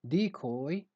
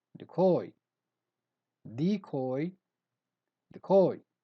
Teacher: word number 6 is different because it has two pronunciations so either you stress the first syllable and you say decoy or you stress the second